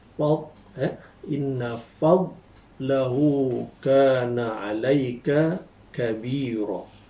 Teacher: lidah berada di posisi tepi atau sisi yang dirapatkan ke gigi geraham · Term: huruf dad